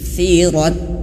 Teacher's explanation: fa itu di ujung lidah menyentuh ujung gigi dari atas. Fa atau seolah-olah kayak digigit ujung lidahnya.